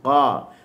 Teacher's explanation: Pangkal lidah naik, hujung lidah jatuh. Ataupun di tengah lidah tidak ada lekukan. Tidak ada taqa'ur fil lisan. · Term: huruf qaf